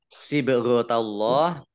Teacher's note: bak sukun bacaan qalqalah. Dibaca memantul, ditampakkan pantulannya.